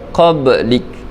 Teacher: Sughra lantunan bunyi qalqalah dia perlahan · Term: qalqalah sughra